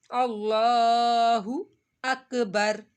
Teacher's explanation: اللہ ہو کو کھینچنا نہیں ہے آپ نے، ہا پیش ہو